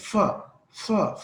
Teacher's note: फा में हमने आवाज फिसल के निकल गई है, फ्रीकेशन आई है उसके अंदर, तो ये फ्रीकेटिव साउंड है।